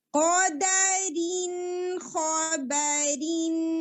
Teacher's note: One of the حلقی letters. اظہار الحلقی ہے تو بالکل نون کو پرومیننٹ کریں گے. لمبا نہیں روکیں گے. پرومیننٹ کریں گے اور اگلا والا لیٹر ادا کریں گے.